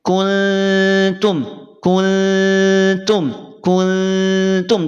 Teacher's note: ketika mengucapkan ikhfa yang samarnya lemah maka tadi cara bacanya tidak menyamarkan seluruhnya masih terasa sayup-sayup Nun sukunnya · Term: ikhfa aqrab